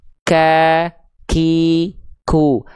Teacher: Huruf kaf dilafalkan sama dari aqsal lisan, dari pangkal lidah. Pangkal lidah tapi yang disentuhkannya, perhatikan, dia disentuhkannya ke antara langit-langit yang lunak dan langit-langit yang keras.